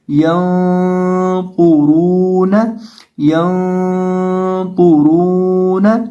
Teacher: تو با کو یہاں موٹا کریں گے کیونکہ با حروف مستعلی میں سے ہے اور را کے اوپر پیش ہے تو را کو بھی موٹا کریں گے اور اس کے ساتھ واو ہے تو یہاں اس کو ہم ایک الف کے برابر لمبا بھی کر کے پڑھیں گے اور آگے پہ نون ہے تو اس کو پڑھیں گے ینطرون ینطرون.